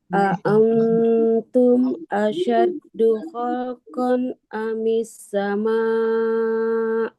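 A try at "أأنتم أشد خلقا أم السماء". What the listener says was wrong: Iya.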